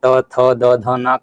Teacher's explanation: बाकी त, थ, द, ध, न का उच्चारण स्थान दंत्य होता है